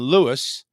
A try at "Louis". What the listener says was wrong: It's Louis. The S is silent. French.